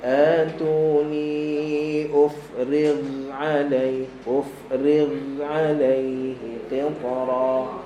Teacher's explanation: huruf ghin dia ada rakhawah. Okey, maka jangan putuskan bunyi dia sampai kita masuk pada ain.